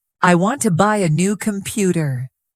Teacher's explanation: the stressed words are want, buy, new, and computer. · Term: sentence stress